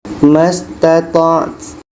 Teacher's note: ta ini sifatnya adalah hamas, berangin. Kita dapatkan anginnya.